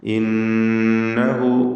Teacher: നൂൻ മുശദ്ദദ മണിച്ചുകൊണ്ട് ഉച്ചരിക്കുക